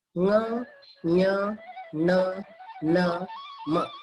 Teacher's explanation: ಅನುನಾಸಿಕಗಳು ಎಂದರೆ ನಾಸಿಕ ಅಂದ್ರೆ ಮೂಗು, ಮೂಗಿನ ಸಹಾಯದಿಂದ ಉಚ್ಚರಿಸಲ್ಪಡುವ ಅಕ್ಷರಗಳು ಅನುನಾಸಿಕಗಳು